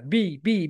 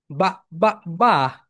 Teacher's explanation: এরপরে বি, বি যখন উচ্চারণ করবে আপার lip lower lip touch together